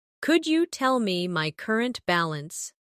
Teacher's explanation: Could you becomes could ya in faster conversation